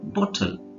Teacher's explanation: ಬಾಟಲ್ ನೀವು ಬಾಟಲ್ ಅಂತ ಹೇಳ್ಬೋದು, ಆದ್ರೆ ಸರಿಯಾದ ಉಚ್ಚಾರಣೆ ಬಾಟಲ್. ಓಕಾರನ ಎಳೆಯೋ ಹಾಗಿಲ್ಲ, ದೀರ್ಘ ಕೊಡೋ ಅವಶ್ಯಕತೆ ಇಲ್ಲ ಅಲ್ಲಿ